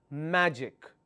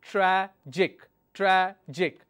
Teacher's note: the syllable stress should be on the second last